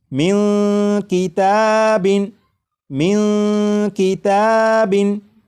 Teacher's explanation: آ چکا ہے، لہٰذا اس نون ساکن میں اخفا ہوگا، یعنی اس نون ساکن کی آواز کو ناک میں چھپا کر غنہ کر کے پڑھیں گے